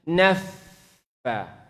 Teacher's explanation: Fa kalau dia bertasydid maupun dia mati maka anginnya, berangin dia.